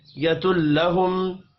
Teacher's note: میم ساکن کے بعد حمزہ ہے، اظہار شفوی ہوگا، غنہ نہیں ہوگا۔